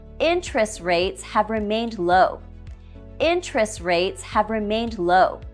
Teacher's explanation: We drop the T in interest. We say, interest rates have remained low.